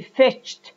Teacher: there are two explosions, one for ch and the second one for de